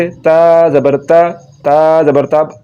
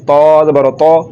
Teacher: अब इसको पढ़ते हुए ना तो ज़ुबान की जड़ तालु की तरफ बुलंद हो रही है और ना ही ज़ुबान का दरमियान वाले हिस्सा तालु के तरफ बुलंद हो रहा है, और ये बारीक पढ़ा जा रहा है ता ज़बर ता।